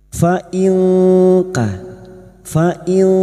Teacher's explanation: nun sukun bertemu Kaf ikhfa Hakiki kita samarkan bunyi nun sukun dan mendengung selama tiga harakat